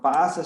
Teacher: इस पास शब्द में हम विशिष्ट वर्ण पर, यहाँ प वर्ण है, यहाँ स वर्ण है, तो हम विशिष्ट वर्ण अर्थात पा पे जब हम जोर देते हैं अर्थात आ की ध्वनि निकलती है, यहाँ प पे विशेष जोर देने के कारण यहाँ बलाघात या स्वराघात हो जाता है। और इस प्रकार से यह पास, नाश, यहाँ बलाघात इस प्रकार से हो गया है।